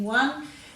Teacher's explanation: using what just the w for the what sound in one we know there's no air after the w so there's no h